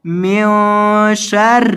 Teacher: نون کی آواز کو ناک میں پڑھنا ہے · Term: گنا